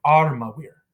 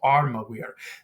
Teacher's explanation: you kind of shorten the last two and hold the first one